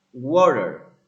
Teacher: the T becomes a flap R water.